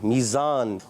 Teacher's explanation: اب اگر ہم سختی سے پڑھیں گے تو خراب ہو جائے گا. تو ہم نے نرمی سے پڑھنا ہے اور سیٹی کے ساتھ پڑھنا ہے · اور یا ساکن سے پہلے زیر آ جائے, یا مدہ ہوتا ہے, اور زا کی ادائیگی میزان. اور زا جب ادا ہوتا ہے سیٹی سے ادا ہوتا ہے.